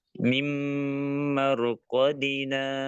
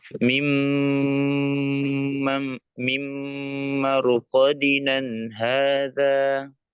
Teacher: Dibaca wasol jadi mat tabi'i dua harokat.